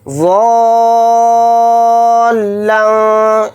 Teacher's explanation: یہ جو اوپر مد ہے مد لازم ہے، اس کو 5 الف کی مقدار ہم کھینچ کر پڑھیں گے واد الف کے ساتھ